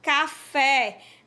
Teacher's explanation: Por exemplo, uma palavra oxítona, café. A sílaba fé, você pronuncia ela com mais tonicidade.